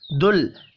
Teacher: لام ساکن پر قلقلہ نہیں کرنا